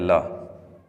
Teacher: जीभ के दोनों किनारों से जब ल वर्ण को बोलेंगे तब हवा पास से, जो पार्श्व यानी किनारे, किनारों से जब हवा निकलती है तब वो उस व्यंजन को हम पार्श्विक व्यंजन कहेंगे। जैसे यह ल, किनारों से हवा निकलना, जीभ के किनारों से हवा निकलना